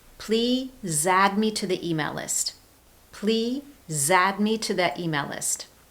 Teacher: the ending sound is z, a consonant. So that sound links across to the word add.